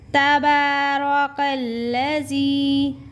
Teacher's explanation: با کو ہم کھڑی زبر ہے، با کو ہم 1 الف کے برابر کھینچیں گے۔ کاف کو لام کے ساتھ ملا کر زے کے نیچے جو زیر ہے اس کو یا کے ساتھ مکس کریں گے، لیکن یا ادا نہیں ہوگا۔